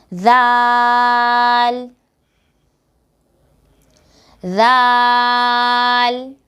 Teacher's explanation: سا کو ادا کرتے وقت زبان کی نوک کو اوپر کے سامنے والے دو دانتوں کے سرے سے لگانا ہے، اور زال کو ادا کرتے وقت بھی زبان کی نوک کو اوپر کے سامنے والے دو دانتوں کے سرے سے لگائیں گے